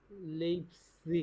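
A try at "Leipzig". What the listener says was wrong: না, এ কেন হবে? এ ই পাশাপাশি থাকলে আই আই আয়ের মতো উচ্চারণ করব।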